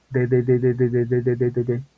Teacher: La D sale como de atrás de los dientes superiores.